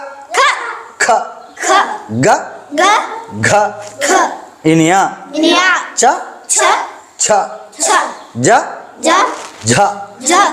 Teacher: ఈ మహాప్రాణాక్షరాలు చదివేటప్పుడు మాత్రం కొద్దిగా హ అనే సౌండ్ వస్తుంది